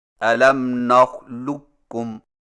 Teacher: قاف کی آواز کو بالکل ختم کر کے صرف ایک کاف مشدد سے پڑھیں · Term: ادغام تام